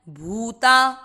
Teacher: भू पे बड़े ऊ की मात्रा लंबा खींचना है